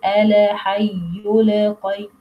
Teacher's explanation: No vibration here when we pronounce اللام الساكنة.